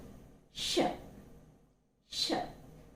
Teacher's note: it is a voiceless consonant, and this is also a palato-alveolar fricative · Okay, so the place of articulation is again almost the same, but only difference is that the position of the tongue is not as closer to the teeth ridge as in the case of ch and j